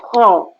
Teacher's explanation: So mulut tu kena membulat. Kho bukan ha. Huruf tebal ni memang kena baca dengan masam.